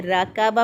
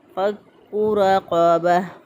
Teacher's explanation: रा के ऊपर ज़बर वो मोटा पढ़ेंगे, रा के ऊपर ज़बर या पेश हो मोटा पढ़ते हैं, ज़ेर हो तो बारीक पढ़ते हैं।